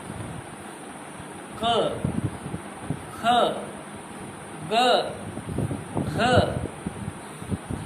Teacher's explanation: क वर्ग थोड़ा कठिन इसलिए है कि जीवा ने नहीं उठना, और ऐसा भी नहीं है कि बिल्कुल नहीं उठना है। जीवा का अगला हिस्सा बिल्कुल नहीं उठेगा, जीवा पीछे से हल्का सा उठेगी, और जो गले में घंटी लग रही है वेलम यानी सॉफ्ट पैलेट, उसको टच होके गले को संकीर्ण कर देगी। गले को संकीर्ण करने से जो ध्वनि उच्चारित होगी वो बेजर साउंड। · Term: वेलर साउंड